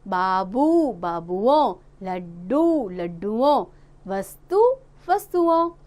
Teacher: कुछ शब्दों के अंत में आए दीर्घ स्वरों को ह्रस्व कर देते हैं, यानी कि जो बड़े स्वर हैं उनको छोटा कर देते हैं और उनमें ओ की जोड़कर वचन का परिवर्तन कर देते हैं।